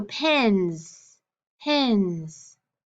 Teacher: you can feel it vibrating so it's a voiced sound